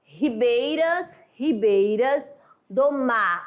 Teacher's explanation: Mar é a última sílaba tônica, né? Aquela última sílaba forte. Então eu conto até aí.